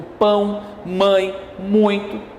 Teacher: ditongo nasal onde o som é expedido pelas fossas nasais